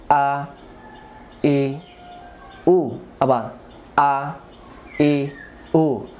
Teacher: হামজা অক্ষর হলকের প্রথম থেকে শক্ত করে পড়তে হয়